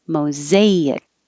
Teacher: this s does sound like a z